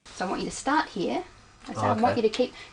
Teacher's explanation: falling tone in English statements usually end in a falling tone the falling tone at the end tells the listener that the statement is finished